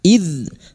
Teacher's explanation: Idz dzal sukun, hati-hati jangan dipantulkan, bukan qalqalah. Idz huruf dzal yang memiliki sifat jahar dan rokhawah, tertahannya nafas dan mengalirnya suara